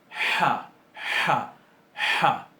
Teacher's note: Es una fricativa sorda, bien gutural.